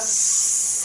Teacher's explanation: 윗니와 아랫니 사이 좁은 틈으로 공기가 스 하고 나오지? 마찰이야. 그래서 여기다가 스, 된소리 스 적을게.